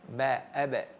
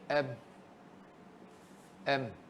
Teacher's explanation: Ba ni sifat dia qalqalah. Mim sifat dia dengung.